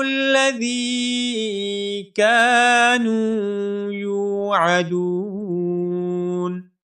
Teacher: یوعدون میں جو دال ہے، اس دال کو بھی ہم 1 الف کے برابر لمبا کریں گے، کیونکہ یہاں پر واو مدہ ہے، دیے جائیں گے.